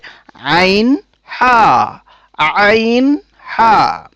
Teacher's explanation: কণ্ঠনালীর মধ্যভাগ থেকে উচ্চারিত হয় 2টি হরফ, এ দুটি হলো হা এবং আইন। আইন হা, আওয়াজটাকে একটু চাপিয়ে কণ্ঠনালীর মধ্যভাগ থেকে উচ্চারণ করতে হয়